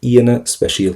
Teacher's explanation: we are going to go for a very strong e sound there so you don't really hear the a